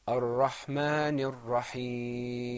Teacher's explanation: we elongated the ya in Rahim because there was that temporary sukoon